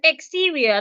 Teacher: And because the word has three syllables, remember the rule I told you, we are stressing the middle syllable